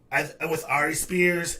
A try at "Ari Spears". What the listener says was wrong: Is there something wrong with your tongue? You can't say Ari Spears, motherfucker. You said Ari Spears.